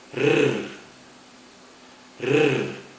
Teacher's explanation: especially that last sound, the R, which we pronounce in South Africa as a rrr, rrr. In my experience, I have found that most non-South Africans have trouble in pronouncing that rrr.